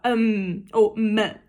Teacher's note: No entanto, a letra M é bilabial também. Tanto que quando você fala M, você encosta o seu lábio superior no inferior também